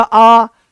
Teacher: तो मुंह बड़ा खुलेगा बट चपटे हो जाएंगे, ऐसे गोलाकार नहीं रहेंगे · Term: अवृत्ताकार